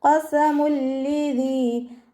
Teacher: ഖാഫ് ഇസ്തിഅലാൻ്റെ letter ആയതുകൊണ്ട് തഫ്ഹീം ചെയ്തിട്ട് ഉച്ചരിക്കുക.